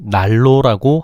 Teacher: 나는 종성 니은이 뒤음절 로의 초성 리을의 영향을 받아서 리을로 바뀐 거야. · 뒤에 있는 유음이 앞에 있는 니은에 영향을 준 거니까 역행동화네.